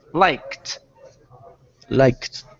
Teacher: Instead of liked, it's a T sound now because the K is unvoiced.